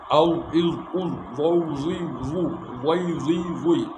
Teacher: জিবার আগার সামনের উপরে দুই দাঁতের আগার সাথে লাগায়া। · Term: জাল